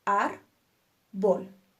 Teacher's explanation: Y nuestra sílaba tónica es ar. Por lo tanto, la consideramos una palabra grave.